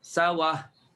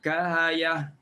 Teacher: Baris yang hamzah tu ambil, transferkan baris hamzah kepada ya, transferkan baris hamzah kepada waw, hamzah dibuang. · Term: naqal